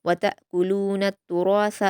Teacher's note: तुरासा में रा पर अलिफ मद्दा है और इसको पुर पढ़ेंगे, दो हरकत खींचकर।